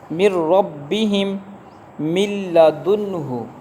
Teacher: نون ساکن کے بعد لام آ گیا تو ادغام ہوگا بغیر غنہ کے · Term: ادغام بغیر غنہ